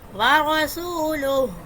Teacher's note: وا پڑھتے ہوئے آپ کے ہونٹ گول ہوں گے، ہو کی ساؤنڈ آنی چاہیے.